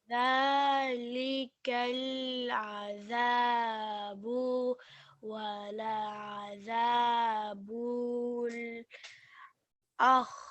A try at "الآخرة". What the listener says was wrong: No, not akh. It's not akh. No, not akh either. The kha has a kasra, sir. It's not sukoon. There is a and there is a kha kasra.